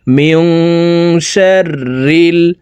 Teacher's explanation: নুন সাকিনের পরে ইকফার হরফ শিন আসছে, এই কারণে এই নুন সাকিনকে নাকের ভিতরে লুকাইয়া গুন্নার সহিত পড়ব